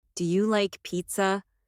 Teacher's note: Make sure your voice rises at the end.